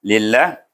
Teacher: Kita baca tebal ke nipis? Baca nipis. Sebab apa? Sebab lam di sini, baris bawah.